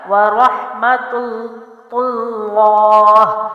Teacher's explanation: تا کی پیش کی وجہ سے جو ہے اللہ کا لام ایک تو موٹا پڑھا جائے گا اور دوسرا ان کو ملا کر سختی اور جماؤ سے پڑھا